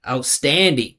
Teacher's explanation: This is a case where this the vowel it exists, but it's unstressed. He needs to put all the pitch in standing.